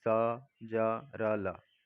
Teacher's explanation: वत्सर्य दांतों के मूल से